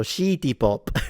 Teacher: the Japanese don't have the sound si, so it will turn into shi. So shitty pop.